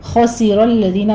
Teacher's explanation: خا پر ہے، را پر ہے، لیکن الذین کا لام آپ نے باریک رکھنا ہے، اس کو آپ نے موٹا نہیں کرنا، ٹھیک ہے۔